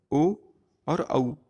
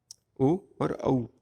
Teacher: कंठोष्ठ ओ और औ, कंठ और ओष्ठ को मिलाकर बनाते हैं, ओ और औ। उसके बाद दांतोष्ठ, दंत से हम व का उच्चारण करते हैं।